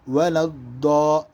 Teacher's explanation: یہ ضاد کی آواز ہے تو ضاد کو موٹا پڑھیں گے،